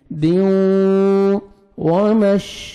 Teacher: ادغام کرنا ہے غنہ کے ساتھ، نوز میں ساؤنڈ لے کے جائیں گے